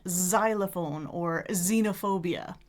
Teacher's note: So what people might know because these days when we see an X in a Greek rooted word that we actually say the Z sound